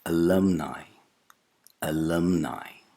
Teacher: The second vowel sound is not U, it's A. And the final vowel sound is not a monophthong, it's not E, it's a diphthong, I. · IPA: /əˈlʌmnaɪ/